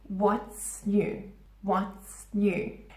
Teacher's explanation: There's no pause. It's not what is new. Doesn't sound natural.